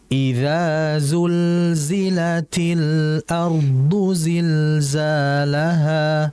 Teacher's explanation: pada Za dan yang kedua fokus pada aliran lam mati karena huruf lam mati ini merupakan huruf yang memiliki sifat tawasud harus dialirkan